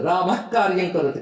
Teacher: క ముందు విసర్గ ఉంది అది పలికేటప్పుడు జిహ్వా మూలం నుంచి వస్తుంది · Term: జిహ్వా మూలియం